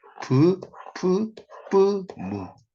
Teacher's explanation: 이렇게 발음을 해보면 입술이 부딪히죠. 그래서 양순음이에요.